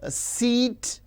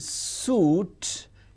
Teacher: E is front close unrounded, whereas U is back close rounded